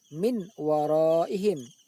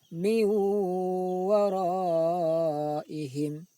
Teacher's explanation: Cara membacanya tidak boleh jelas min waraihim, akan tapi bunyi nun sukun tersebut dimasukkan ke dalam huruf waw sambil didengungkan. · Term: idgham bi ghunnah